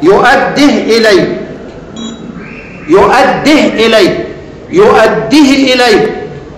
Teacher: بمد الواو او الياء التي تولدت عن الاشباع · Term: مد منفصل